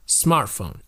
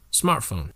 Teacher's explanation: smart has a lot more emphasis and you can barely hear the word phone